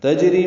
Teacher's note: جیم ساکن پہ قلقلہ ہے، را باریک ہے، ری یا مدہ ہے